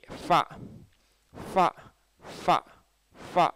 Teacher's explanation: ஃப மேற்பற்கள் கீழ் உதட்டில் படும், அது தன்னால் படும்,